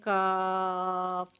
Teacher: आवाज और सिंपल सादा काफ की आवाज में बहुत फर्क है सादा जो काफ है उसको हम गोल नहीं करते मुंह को और मुंह को खुला रख के पढ़ते हैं